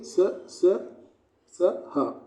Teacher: उष्म व्यंजन। इनका उच्चारण करते समय वायु का घर्षण महसूस होता है